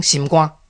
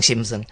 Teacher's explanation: 人，因为伊嫁台湾人，伊讲伊嫁去了后才开始学台语，伊定定发生一个问题，就讲伊今仔日共问一个讲法，人甲伊教一个音，第二天伊去讲共款讲即个字的时，人甲伊讲你毋对，讲了毋对，用我都拄照你讲诶，但是你即摆甲我讲毋对，因为一字甲两字的时调诶无共款，像咱记一个吼，你讲心，那你若讲肝的时，爱讲心肝，袂使心肝，但是你讲我学晓，我知影爱变调，讲心肝袂使，爱讲心肝，但是咧，你若心酸，你袂使讲心酸啊，就爱讲心酸，因为心酸的结果甲心肝的结果无共款， 伫个心肝内面心爱变调，伫个心酸内面心袂使变调